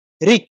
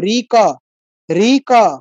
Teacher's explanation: ঋ এখানে কিন্তু ক উচ্চারিত হয়নি আমি কিন্তু ক তে গি চাপ দিয়ে থেমে গেছি ঋ এরকম